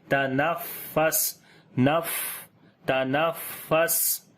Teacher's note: والصبح، صبح، اذا، ذال کو نرم پڑھیں گے، لمبا بھی کریں گے اور فا کے اوپر صفت ہمس آ جائے گی، سانس فا کے اوپر بھی جاری کریں گے اور سین کے اوپر بھی